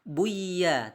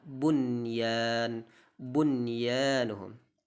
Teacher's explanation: nun sukun bertemu ya, maka tidak boleh kita baca buya, tidak boleh, tapi tetap dibaca bunyan, bunyanuhum. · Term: idhar wajib